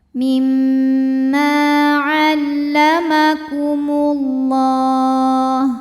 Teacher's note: Lam pada lafaz Allah atau lam jalalah dibunyikan secara tafkhim karena huruf sebelumnya berbaris dhommah. Maka dibacanya tebal